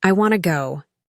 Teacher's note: But in fast, casual speech, it sounds more like I want to go. Here, want to becomes wanna, and it's something native speakers do all the time without even thinking